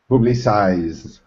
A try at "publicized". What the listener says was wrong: Not poo, but pa. Publicized. It's very easy to say ed, at the end, like publicize ed. It's very easy to do that, but avoid the temptation, Raphael.